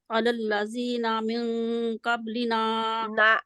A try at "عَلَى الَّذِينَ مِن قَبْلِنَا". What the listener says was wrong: على الذين من قبلنا نون کو کھینچنا نہیں ہے